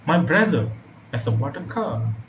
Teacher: The stress word here is brother.